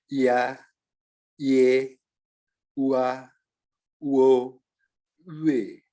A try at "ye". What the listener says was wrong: Yue-nya udah benar, Pak. Cuman jangan turun. Nadanya tetap stabil. Yue.